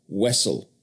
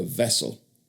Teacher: Speakers in Boston and Philadelphia often substituted W for V, Wessel for vessel.